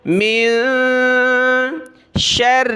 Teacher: میم نون زیر، من شر، شین کو را کے ساتھ ملایا، را کے اوپر تشدید ہے تو ہم نے اس کو جمانا ہے، سختی کے ساتھ پڑھنا ہے ، لیکن پلس میں یہ ہے کہ را کے نیچے زیر